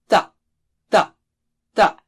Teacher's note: Touch the tip of the tongue to the roots of the upper teeth.